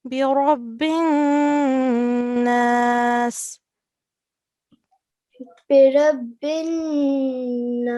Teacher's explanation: we stay in this noon and do nasal sound